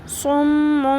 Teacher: اب صم میم کی آواز کو بھی لمبا کرنا ہے، اور یہ جہاں پر بھی یہ چھوٹا میم ہوتا ہے اس کی آواز کو بھی لمبا کرنا ہوتا ہے.